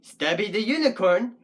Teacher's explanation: Because if you did stabby, that'd be on the other syllable. So Stabby the Unicorn has emphasis on sta and u